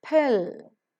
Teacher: pronounced with a slight h sound because p is present in the initial position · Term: aspiration